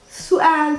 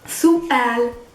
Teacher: It's su, glottal stop, and then you have to add the al.